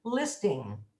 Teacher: there's no g on the end of listening it's an n made in the back of the throat